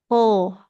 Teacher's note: huruf to itu ujung lidahnya nempelnya ke pangkal gigi. Pangkal gigi seri atas dekat dengan gusi, tapi bukan di gusinya ya, di giginya cuma di pangkal.